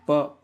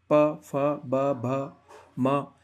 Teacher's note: प बोलोगे आप तो आपके होठ होठ टकरा रहे हैं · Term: प वर्ग